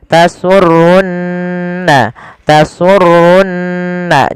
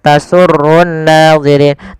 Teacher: ada nun berharokat tasydid, maka ya kita baca dengan bacaan gunnah, ditahan suara nunnya.